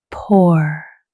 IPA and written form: pʊr (Poor)